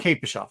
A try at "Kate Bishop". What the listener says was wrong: It sounds the way you're pronouncing Bishop. You're pronouncing like Bischoff.